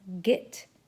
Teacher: The next sound is a voiced sound, stop sound made in the back of the mouth